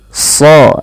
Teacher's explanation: Sa dan ra diwarnai biru di sini, artinya dibaca dengan tebal. Karena dia huruf sad, huruf isti'la dan idbaq, dan dibaca dengan tebal